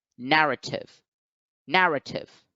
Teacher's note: Now, in the word narrative, we have 3 syllables, and the first syllable has the stress mark. So it is the one which is accented.